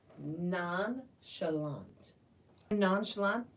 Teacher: pronounce the CH like it's an sh because it's a French word